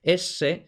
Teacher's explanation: es este sonido áspero típico del norte de españa de madrid